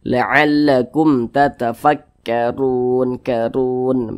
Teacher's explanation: Huruf ra yang memiliki tanda baca dhammah dibaca tafkhim. Jadi ketika kita mengucapkannya itu, pangkal lisan kita itu naik, terangkat ke atas, jadi dibaca tafkhim, dibaca tebal. Jadi huruf ra-nya itu kita tebalkan.